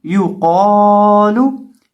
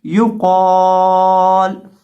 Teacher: یا پیش یو، قاف زبر الف قا، یو قا، لام پیش لو، یو قالو۔ یا کو اور لام کو پڑھتے وقت ہونٹوں کو گول کر کے پڑھیں گے کیونکہ ان کے اوپر پیش ہے، اور قاف کو موٹا کریں گے، اور وقف کرتے وقت لام کو ساکن کریں گے، آواز آئے گی یو قال۔